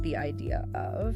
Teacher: an R sound is inserted between words to smooth the transition even if there's no R in the spelling of the first word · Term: intrusive R